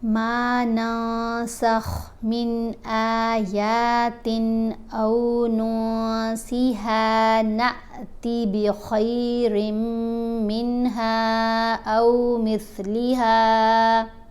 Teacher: میم کو ہم نے لمبا کیا کیونکہ میم کے اوپر زبر ہے، ساتھ الف ہے، تو یہ حرف مدہ ہے۔